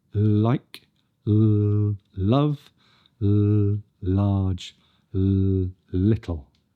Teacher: The tip of the tongue is pressed onto the alveolar ridge, and we make a voiced sound that passes over the sides of the tongue. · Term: L sound